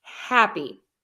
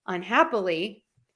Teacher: I am stressing the syllable hap, happy. If I add un, the prefix, unhappy, I'm still stressing the hap.